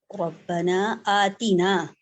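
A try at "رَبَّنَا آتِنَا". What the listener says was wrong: آتینا نہیں ہے آتینا بس، کیونکہ پہلے بھی آپ نے تھوڑا سا مد اصلی میں بدل دیا تھا. اس کو آتینا نہیں پڑھیں گے ورنہ پھر وہ مد ہو جائے گی یہاں پہ. ٹھیک ہے اس کو پڑھیں آتینا. آتینا بس.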